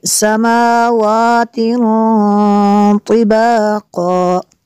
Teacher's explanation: تنوین کے بعد تو ہے حروف اخفا میں سے یہاں پہ اخفا ہوگا، اس لیے یہاں پہ غنہ کریں گے